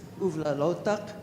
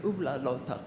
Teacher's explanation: from one village to another you might hear it said as a B and sometimes as a V